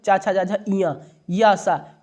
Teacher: ये जितने भी चा वर्ग और या सा और ई इनका उच्चारण स्थान तालु है।